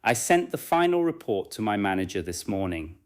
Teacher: The strongest words are usually sent final report, manager, and morning. Words such as I, the to, my, and this are necessary, but they are usually lighter. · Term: sentence stress